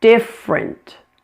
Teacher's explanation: Notice this word has a dropped middle syllable. It's only two syllables.